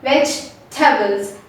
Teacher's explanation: Actually, we have to forget about the E over there. We have to think the E has disappeared over here and we have to consider only V-E-G and T-A-B-L-E-S.